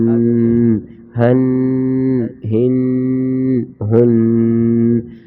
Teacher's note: اس کی آواز آئے گی سینے سے، بھاری آواز ہے